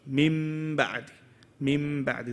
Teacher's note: There's no noon. There shouldn't be any traces of the noon within that word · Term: iqlab